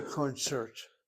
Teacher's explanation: I say concert with the accents really on the second syllable, but the word is a borrowed word, so it's not an issue.